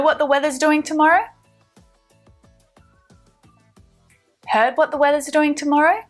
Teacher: our intonation is going up to signal the question